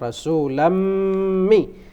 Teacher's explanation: nun mati bertemu dengan mim, rasulammi. Itu harus dibaca dengung ya